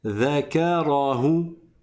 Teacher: Dha, il est aminci, il est aigu, il n'est pas grave.